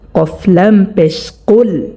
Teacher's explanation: কফলাম পেশ কুল, এখানে যে কফটা আমরা দেখতে পাচ্ছি এই কফটা 4 নম্বর মাখরাজ থেকে উচ্চারণ হবে। জিহ্বার গোড়া তার বরাবর উপরে তালুর সঙ্গে লাগাইয়া 2 নুক্তাওয়ালা কফ